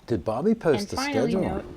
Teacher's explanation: the final fall drops below the baseline